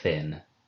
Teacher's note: the theta did actually get to be pronounced not as an aspirate, but as a fricative